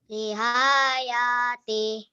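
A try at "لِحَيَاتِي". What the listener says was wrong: Masih panjang. Kayak ini nak. Lihayati. Hanya pendek. Lihayati.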